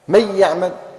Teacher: تنطق الحرف الثاني مشددا، ننطق الياء مشددا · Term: الإدغام بغنة